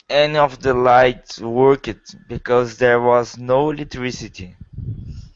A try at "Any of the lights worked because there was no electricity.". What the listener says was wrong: The problem there is the word worked, because you're saying work it. Worked.